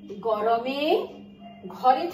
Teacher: যখন আমি গরম বলেছি, ঘর বলেছি, তখন স্বরতন্ত্র একটু বেশি কম্পিত হচ্ছে। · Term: ঘোষধ্বনি